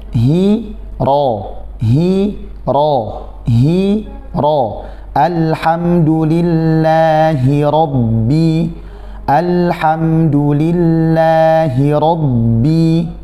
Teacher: Jadi setelah menebalkan huruf ro, ba-nya tipis. · Ada ha yang juga berharokat kasroh. Haknya berharokat kasroh. Jangan sampai dia kasrohnya berubah menjadi imalah. Alhamdulillahi rob, atau jadi tebal haknya karena kita menebalkan huruf ro.